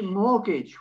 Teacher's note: we want to skip the tea and go straight into mortgage